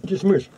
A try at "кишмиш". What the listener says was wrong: Не кыш-мыш, а киш-миш.